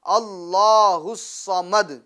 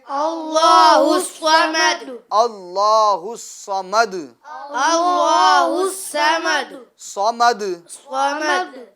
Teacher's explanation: جو اللہ الصمد کے اندر جو صاد ہے تو اس کو پور پڑھیں گے